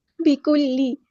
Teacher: کاف ہمارا باریک لائٹ لیٹر ہے، لام کی زیر کو ہم لمبا نہیں کریں گے